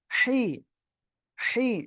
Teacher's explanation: গলাটা চিকুন করে হালকা বাতাস বের করে উচ্চারণ করতে হবে।